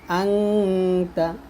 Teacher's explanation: আনতা আং গুণ করবেন